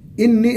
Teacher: إني النون مشددة بالكسر وقلنا بمقدار حركتين